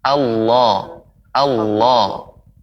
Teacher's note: benar-benar yang tebal itu naiknya suara, lidah naik ke atas